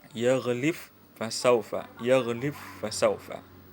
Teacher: Qiraat As-Susi juga mengidgamkan huruf ba al-majzumah, huruf ba yang sukun. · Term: idgham